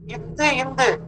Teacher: மேல்வாய் பல்லின் அடியை நாக்கின் நுனி பொருந்துவதால் பிறக்கிறது